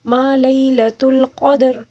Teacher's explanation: قوف کو بھی پر پڑھیں گے اور دال کو ساکن کے ساتھ یعنی قلقلے کے ساتھ پڑھیں گے، اور کیونکہ دال کے اوپر جو ساکن ہے اس کی وجہ سے قلقلہ ہوگا، ٹھیک ہے، اور را کے نیچے جو زیر ہے وقف کے دوران زیر کو ہم ساکن کے ساتھ تبدیل کر کے پڑھیں گے، ٹھیک ہے۔